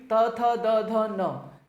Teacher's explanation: सब मैं आपके दांत लग रहे हैं · दंत लग रहे हैं जीभ के साथ में